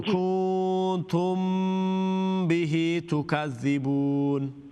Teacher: کنتم میم ساکن کے بعد با ہے یہاں پر, تو یہ میم ساکن کا غنہ اخفا ہے